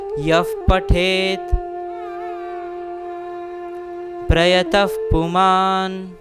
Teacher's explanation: अगर विसर्ग आता है और उसके आगे अगर प अक्षर आता है तो हम वहाँ पे अर्ध फ का उच्चारण करेंगे